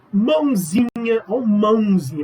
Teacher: a hora que você fala mãozinha, você trabalha com o nariz parece que vai entupir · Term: nasalização